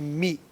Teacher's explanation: می زیر ہے نا، تو اس کو مجہول نہ کریں